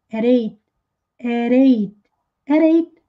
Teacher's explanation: Vejam que esse at, que é as, para dizer as horas, às 8 horas, como o número 8 em inglês é 8, começa com som de vogal, a letra T veio entre sons de vogais, do A e do E, de 8. Então, ele pronunciou o T com som de R.